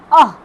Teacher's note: अ, आ, अह। जो विसर्ग है वो भी कंठ से निकलती है।